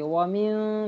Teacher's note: یہاں اخفا کریں گے، ومن ناک میں آواز چھپائیں گے